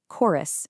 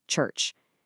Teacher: They both begin with the exact same letters, CH, but in chorus, that ch acts as a hard k sound. In church, it acts as a ch sound.